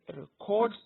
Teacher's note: you put the stress on the second syllable, you have the verb. But when you put the stress on the first syllable, it becomes record, and it is a noun.